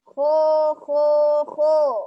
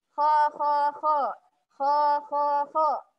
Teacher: Yakni pangkal lidahnya mesti dinaikkan. Suaranya mesti tebal. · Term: sifat isti'la